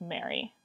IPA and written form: me͡əɹi (Mary)